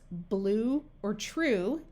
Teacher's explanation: Like in the words blue or true, you do not hear the Y sound.